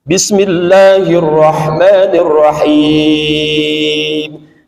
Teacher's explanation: Ujungnya mad arid disukun. Jadi jangan masuk ke hidung dulu.